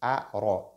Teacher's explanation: La lettre ra, lorsqu'elle porte fatha, elle est lue de façon emphatique. A-ra, évite tafrim.